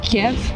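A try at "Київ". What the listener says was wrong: Russian version to pronounce is Kiev, but Ukrainian version, what I think is a correct version, is Kyiv. Recently, officially, there was a change, international change from Kiev to Kyiv, so that it's like in Ukrainian, it's like Kyiv instead of Kiev.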